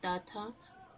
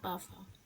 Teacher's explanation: तो स्वर तना में कंपन नहीं होता। केवल स्वास की आवश्यकता होती है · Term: अघोष व्यंजन